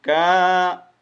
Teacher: کاف کو ایک الف مطابق لمبا کریں گے